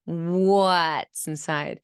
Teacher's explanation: literally your lips are going to glide as you're saying the W. So first they're going to be protruded out like what, and they're going to retract.